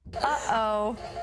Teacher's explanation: stop is not considered uh non-standard it's considered standard in oh when you say uh-oh you have a glottal stop in the middle